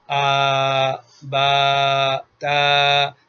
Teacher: شروع سے حلق کے بالکل اخیر سے لے لیجئے، وہاں سے آواز نکلتی ہے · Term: الف مدہ